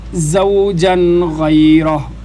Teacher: 3 حرف ایسے ہیں قرآن پاک میں جن کے اوپر سیٹی کی آواز آئے، ان میں ایک زا بھی ہے، ان کو حروف صفیریہ بھی کہتے ہیں، سیٹی والے حروف، صاد زا سین۔